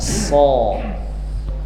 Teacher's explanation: Nah itu, jadi bunyinya tetap s. Cuma kalau shad dibuat menjadi bunyi tebal, tafkhim, karena pangkal lidahnya terangkat